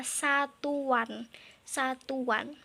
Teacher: seperti terdengar bunyi W padahal sebenarnya tidak ada. Itulah termasuk ke dalam yang namanya bunyi pelancar W.